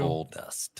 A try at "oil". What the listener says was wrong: Did you say oil or oil? It's oil.